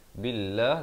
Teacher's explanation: lafaz jalalah ini dibaca nipis 2 harakat. Walaupun nampak baris fathah di sini, tapi dibaca 2, ya.